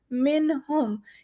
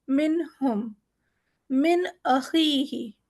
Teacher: ہم جب بھی نون کو پڑھیں گے ہمارا نون ظاہر ہونا ہے یہاں پر، نون کا اظہار کرتے ہوئے